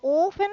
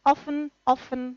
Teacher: Ofen es una tensión articulatoria, offen, offen, relajada.